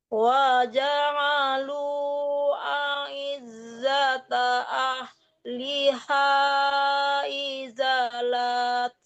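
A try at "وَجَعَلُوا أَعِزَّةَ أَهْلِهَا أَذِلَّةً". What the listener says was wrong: Woi, kok dibalik adillah ya. A'izzata ahliha adillah. Nah, itu dimatikan tama butah tidak boleh dipanjangkan ya. Selain dari tama butah yang berharakat fathatain atau berbaris dua itu dipanjangkan dua harakat kecuali tama butah.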